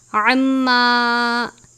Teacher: عین کی آواز حلق سے نکلتی ہے ، عین اور حا کو ہمیشہ باریک ادا کیا جاتا ہے،